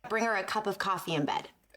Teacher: So she sounds more friendly because she uses a cup of coffee in bed. Rising intonation on coffee.